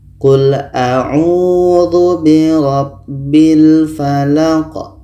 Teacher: La ini pendek dan qa ini dimatikan. Qa mati hukumnya adalah qalqalah. Qalqalah kubra, ada pantulan.